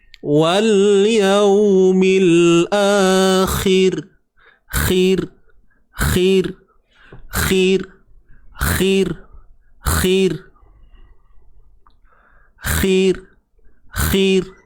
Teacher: Ra kat sini kita kena baca dengan nipis.